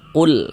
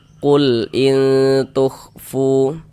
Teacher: Dia itu dibaca izhar. Nah, terbaca huruf lamnya